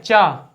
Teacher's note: जैसे आप चा बोलेंगे तो आपकी जीभ जो है वो दांतों के ऊपर थोड़ी जगह को टच करेगी। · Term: तालु